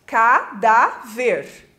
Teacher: O dá é a segunda sílaba de trás para frente, ou seja, a penúltima sílaba, por isso ela é tônica.